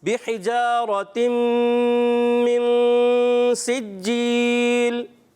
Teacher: تنوین کے بعد میم آنے کی وجہ سے حروف ارملون میں سے غنہ کریں گے، ادغام مال غنہ. اور من میں اخفا کا غنہ کرتے ہوئے نون ساکن تنوین کے قاعدوں میں سے سین آیا تو اس لیے یہاں پر بھی اخفا کا قاعدہ ہوگا، غنہ کر کے جائیں گے، صحیح ہے.